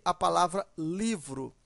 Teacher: Eu tenho aqui a palavra livro. A sílaba mais forte é li.